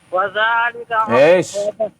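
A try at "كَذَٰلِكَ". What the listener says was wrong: Mana? Kadzalika bukan wazalika, ka gitu.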